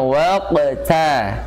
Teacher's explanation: Hati-hati taknya jangan sampai terpengaruh karena posisinya dia di tengah. Ya, qafnya tebal, ta tipis, ra-nya tebal.